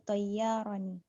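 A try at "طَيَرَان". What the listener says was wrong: Tayaran. Kalau ada tasdidnya tayyaran itu hanya penerbang. Kalau tayaran penerbangan. Jadi yang membedakan itu. Kalau tayaran itu masdar. Kalau tayyar itu sigat mubalaghah.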